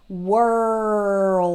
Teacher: notice how I draw out the R and the L